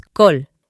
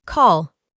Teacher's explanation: Reemplazamos la A por una O, pero una O más redonda que lo normal.